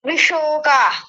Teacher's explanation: इन्होंने तालव्य शकार को मूर्धन्य शकार बोल दिया था।